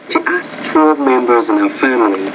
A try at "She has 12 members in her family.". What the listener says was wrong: She has 12 members in her family. You want to say has, not as. Has. She has 12 members. So probably put a lot of emphasis on the word 12 in that case.